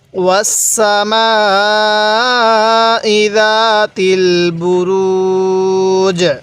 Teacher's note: জিমটা এখানে ওয়াকফ করার সময় জিমের মধ্যে একটু কলকলা করে পড়ব, কারণ জিমটা হলো কলকলার হরফ।